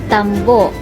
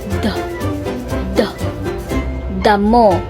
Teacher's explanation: ang dulo ng dila ay dumidikit sa loob ng mga ngipin sa bahaging itaas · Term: pangipin